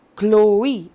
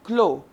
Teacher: the both the vowels are to be pronounced separately